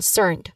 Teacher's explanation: in concerned, you emphasize the second syllable